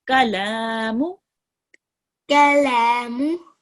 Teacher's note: Just try to make the lam a little bit longer.